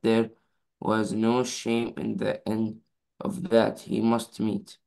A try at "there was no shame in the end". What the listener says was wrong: Focus when you read. It said here, there was no shame in the end. There is no of, okay?